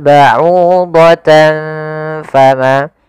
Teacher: Yaitu apabila ada fathatain, kasrotain atau dia tanwin istilahnya bertemu dengan huruf fa, maka ini kita namakan dengan bacaan ikhfa. Cara membacanya adalah menyamarkan suara tanwinnya kepada huruf fa.